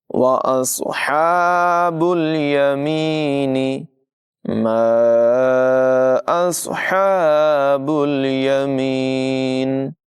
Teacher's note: صاد کی آواز پر ہوگی، ہا کو حلق کے درمیانی حصے سے ادا کریں گے